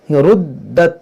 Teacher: ये दाल को खूब जमाव के साथ पढ़ेंगे, मुसद्दद है और हुर्फ़े कलकला भी है